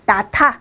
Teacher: 히읗 받침이 있을 때는 거센 소리로 바꿔서 소리를 낸다. 뒤에 것과 합해서. · 나타는 받침에 있는 히읗과 뒤에 있는 디귿이 만나서, 그래서 히읗과 디귿이 만나서 티읕이 되는 거죠. 그래서 발음에 나타 이렇게 되는 거예요.